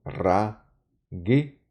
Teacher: Perdón, debe haber siempre una vocal entre consonantes, por eso esta sheva que dicen una semivocal, trabaja como vocal y se pronuncia como una E corta